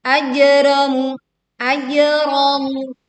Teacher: Ini kita mantul jim sukun ya dengan suara yang kuat. Ajramu kanu, mu kanu, sama-sama dibaca panjang 2 harokat.